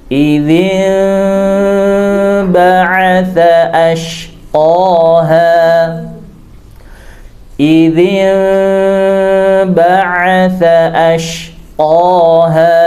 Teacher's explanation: Idzin didengungkan dengan cara boleh dirapatkan bibirnya, juga boleh difurjahkan, ya, boleh dibuka sedikit